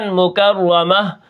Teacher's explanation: اب میں نے جو آخر میں وقف کیا تا کو ہا کے ساتھ تبدیل کر دیا ہے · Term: وقف بالابدال